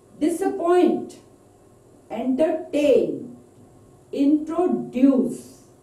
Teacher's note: now stress on the third syllable